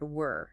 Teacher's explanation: were often uses that relaxed schwa sound that we were talking about earlier.